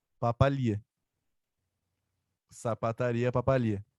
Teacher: Então, se sapataria, a tônica é no ri, papalia, a tônica é no li. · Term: sílaba tônica